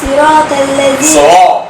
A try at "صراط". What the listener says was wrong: صراط تفخم وليس توقف.